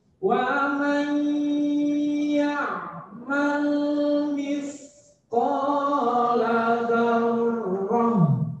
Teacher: Berarti ini juga bisa disebut dengan ikhfa. Wa mai, kalau ditutup hidungnya bindeng, sengal. Mai, nah itu namanya mendengung.